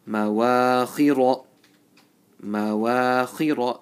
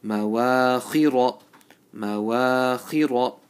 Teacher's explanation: So mim wa are empty mouth. Kha and ra are full mouth.